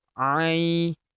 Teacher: Huruf A kita ayun sekali karena terdapat ya sukun di depannya